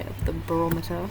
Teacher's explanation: So schwa and maybe a V. It's almost devoiced